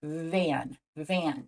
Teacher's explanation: when we make the V sound like in the beginning of the word van we actually do turn our voice on which gives it a gentle buzzing feeling Van van try it this sound is voiced so you can · This sound is voiced, so you can feel your vocal cords vibrating when you say van.